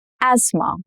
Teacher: th is slightly hard in this word and that is why they've dropped the sound completely. Now, imagine somebody walking up to an American and complaining about their asthma attack and calling it as am asma. · The th is silent in this case.